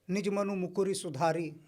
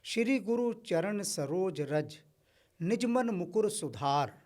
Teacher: जब भी ह्रस्व उ और ह्रस्व ई की मात्रा आती है अंतिम शब्द में उसका लोप हो जाता है